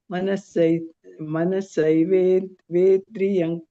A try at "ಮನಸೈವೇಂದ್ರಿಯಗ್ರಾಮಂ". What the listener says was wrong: ಇಲ್ಲ ಅಲ್ಲಿವೇಂದ್ರಿಯ ಆಗಬೇಕು ಅಲ್ಲಿ ಅನುಸ್ವಾರ ಬರುತ್ತೆ